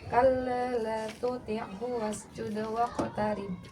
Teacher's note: Qalqalah tadi ada yang kurang, pantulannya tuh kurang terdengar ya Kak ya.